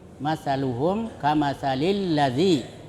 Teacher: Cara membacanya dengan mengidgamkan atau mentasdidkan ya, pada huruf syamsiah, sehingga alnya itu tidak terbaca yang pertama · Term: idgham syamsiah